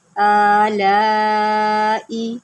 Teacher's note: یہ جو کھڑا زبر ہے اس کو آپ ایک الف کے برابر لمبا کریں گے. اٹ مینس 1 سیکنڈ کے برابر لمبا کریں.